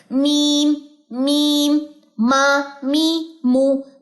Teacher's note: میم دونوں ہونٹوں کے خشکی والے حصے سے, یعنی کہ باہر والا ہونٹ زیادہ اس میں یوز ہو رہا ہے